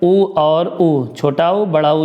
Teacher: छोटा उ बड़ा उ, ये क्या है, ओष्ठ से उच्चारण है